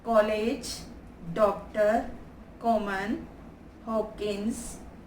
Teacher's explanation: इन दोनों में का तथा ड की ध्वनियाँ न तो हिंदी के का तथा डा के समान है और ना ही को तथा डो के समान है, यानी हिंदी के समान नहीं, हिंदी के शब्दों के समान नहीं है। तो ये ध्वनियाँ आ तथा ओ के बीच की है। इन्हें बोलते हुए मुंह आधा गोल खुलता है।